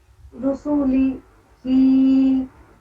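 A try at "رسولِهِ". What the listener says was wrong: ہاں تو لی ہی نہیں ہونا چاہیے، رسولی لیہی،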